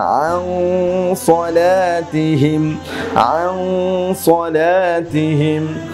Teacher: সদটা হচ্ছে মোটা হরফ, যার জন্য আমাকে গুন্নাহটাকেও মোটা করে পড়তে হবে।